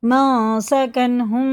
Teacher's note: یہ جیسے لکھا ویسے پڑھیں گے، نہ اخفا نہ گنہ، یہ اظہار کا قاعدہ ہے، کیونکہ یہ ہا جو ہے نا یہ حرف حلقی میں سے ہے، اگر تنوین نون ساکن کے بعد حرف حلقی میں سے کوئی حرف آ جائے تو اظہار کا قاعدہ ہوگا، جیسا لکھا ویسے ہی پڑھیں گے، غنہ اخفا کچھ نہیں ہوگا، یہاں غنہ اور اخفا ہوگا۔